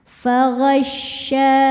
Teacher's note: Ketika kita menekan huruf syin terdengar ada suara angin yang menyebar di dalam mulut namanya tafasyi ya. Fagasya sya hukum madnya adalah mad thobi'i muqaddar.